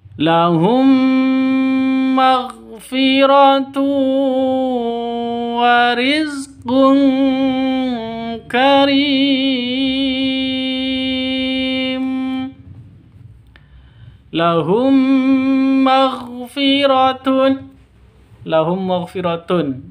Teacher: Mim mati bertemu dengan mim. Cara bacanya, masuk ke mim yang kedua disertai dengung dua ketukan, karena bacaan idgham mimi atau idgham mislain.